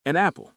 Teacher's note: The N sound jumps over.